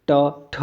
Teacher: ट वर्ग जो हमारा उच्चारण है दोस्तों हमारे मूर्धा से है। आप देखिए, ट ठ, आपकी देखिए इसमें जीभ मुड़ेगी ही मुड़ेगी।